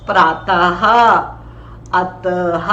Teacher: जब हम इसको बोलते हैं तो जो हवा है वो कंठ से निकलती है